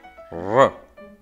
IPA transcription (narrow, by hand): ɹˠ